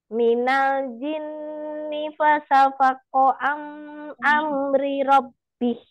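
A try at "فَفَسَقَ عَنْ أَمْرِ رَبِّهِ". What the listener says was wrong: Umi, fa-nya dua. Fafasako.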